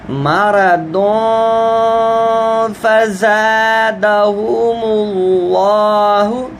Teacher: قلوبہم مرض، اب بہت کے اوپر دو پیشیں ہیں، تنوین ہے، تنوین سے آگے فا حروف حلقی نہیں ہے تو لہذا یہاں پر بھی اخفا ہے